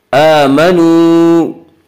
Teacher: वाह मद्दा वो वाह जो साकिन हो और इससे पहले पेश हो, और वाह मद्दा को एक अलिफ की मिकदार खींच कर पढ़ेंगे